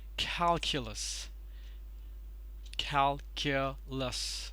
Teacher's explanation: calculus stresses on the first syllable · Now this one doesn't look to be very difficult actually, but there is a bit of a thing that you need to take care of while you're pronouncing it, and it is pronounced as cal, care, care, not q, care, calculus. Stress is on the first syllable.